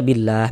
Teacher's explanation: Karena berwakaf di huruf yang enggak dibaca panjang, maka hurufnya kita sukunkan, kita matikan sehingga kita baca billah